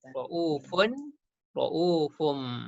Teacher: Daripada buka mulut kepada tutup mulut. Berserta dengung. Kemudian bil ibad, qalqalah pada huruf dal. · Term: iklab